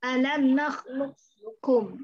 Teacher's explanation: Jadi isti'lanya harus diperlihatkan, tapi dia punya qalqalah, qalqalahnya dibuang.